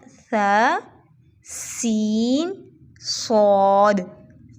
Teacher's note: सा नरमी से, सीन सीटी वाला, सौद में हल्की सी सीटी और मोटा